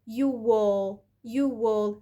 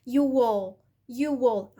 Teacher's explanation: أول حاجة ربطت بصوت ال W، تاني حركة إن أنا وقعت صوت الهمزة أو وقعت الجلوتال ستوب ده كأنه مش موجود. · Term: linking